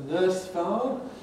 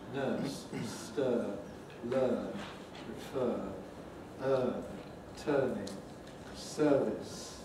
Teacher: Then the nurse vowel, long mid-central vowel